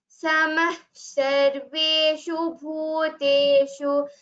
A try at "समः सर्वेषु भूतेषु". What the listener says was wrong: Again, the sa should be heard there. It becomes a visarga sakara sandhi. So samas sarveshu bhuteshu.